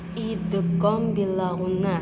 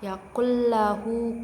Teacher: cara bacanya tanpa didengung jadi langsung dimasukkan